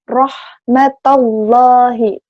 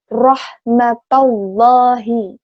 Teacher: Jadi ro membentuk makhraj ro-nya ditebalkan.